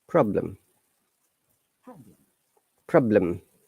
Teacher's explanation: in problem the e is the schwa sound